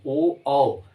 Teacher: जब ओ और औ बोलेंगे तो भी कंठ में कंपन होगा, लेकिन ओठ की भी आकृतियां बनेंगी